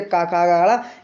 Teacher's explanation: तो दोस्तों आपने देखा होगा कि का के जो वर्ण होते हैं वो कंठ में आते हैं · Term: कंठ व्यंजन